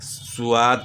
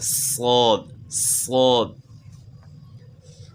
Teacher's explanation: زبان تالو کی طرف اٹھائیں گے، جس طرح آپ کو پہلے بتایا ہے کہ 7 موٹے حروف حروف مستعلیہ جو کہ ہمیشہ موٹے پڑھے جاتے ہیں، ان میں سے صاد بھی ہے۔ زبان تالو کی طرف اٹھے گی اور صاد کو آپ نے موٹا پڑھنا ہے